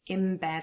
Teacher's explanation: We have assimilation here. In bed becomes in bed, so the n changes for an m.